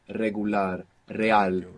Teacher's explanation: an initial R like in regular in most Spanish dialects it's a rolling R you get this flick of the tongue